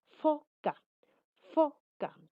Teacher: Hay un paso de aire dificultoso. Dice que el aire va a salir con algo de dificultad. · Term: fricativos